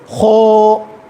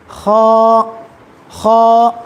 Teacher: حرف موٹا ہے، حرکت موٹی نہیں ہے